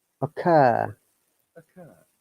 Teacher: this o is a short sound and r is silent in british english